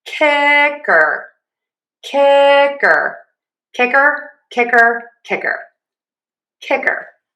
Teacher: Again, our main pattern stress syllable number one.